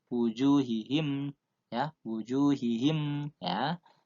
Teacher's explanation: Kalau wawu jatuhnya setelah huruf berharokatkan dhammah, itu juga namanya mat tobi'i atau mat asli, ya. Wujuhihim, panjangnya sama satu alif atau dua ketukan.